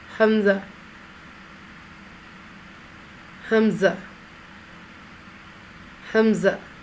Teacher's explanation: ہا کو بغیر کھینچے میم کے ساتھ فوراً ملائیں گے اور میم میں بھی آواز کو لمبا نہیں کریں گے